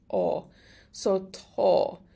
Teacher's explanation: because the A has a fada, it becomes long, so it gets an O sound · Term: long vowels